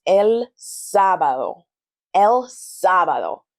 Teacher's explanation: You'll notice that there's an emphasis on the first syllable, sa, el sábado.